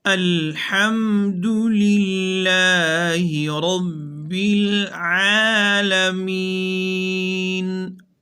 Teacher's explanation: الحمد پیش معروف پڑھیں گے، دونوں ہونٹوں کو گول کر کے، للہ زیر معروف پڑھیں گے، را کے اوپر زبر ہے تو پر پڑھی جائے گی، العالمین وسط حلق سے ادا کیا جائے گا تاکہ معنی میں غلطی نہ آئے